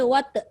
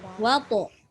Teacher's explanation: qalqalah ta itu mesti bukan sekadar qalqalah, tapi dia mesti menebalkan huruf ta. Dia tak boleh baca wat tak boleh.